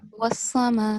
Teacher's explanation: Make sure you prolong the ma for 4 seconds at least